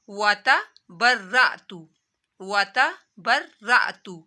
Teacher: را کو 2 دفعہ پڑھا جائے گا اور موٹا بھی پڑھا جائے گا